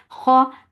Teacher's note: Kha, kha is heavy. When you're saying kha, your lips should be in a straight position and your tongue should be lifted up to make this kha heavy.